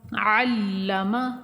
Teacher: عین کو واضح طور پہ نکالیں گے حلق سے